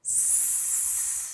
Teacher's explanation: voiced consonant is you need your voice to make the sound if we are using or saying the S sound we don't need our voice it's just air